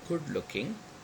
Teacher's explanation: Good looking, look is primary stress, and good is secondary stress.